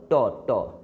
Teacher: ट कहोगे तो जीभ का जहाँ जाकर धकिया होता है ना, जहाँ जाकर धक्का मारता है तो उस जगह को हम कहते हैं मूर्धा। क्या समझा? मूर्धा, एकदम बीच वाला हिस्सा मूर्धा होता है।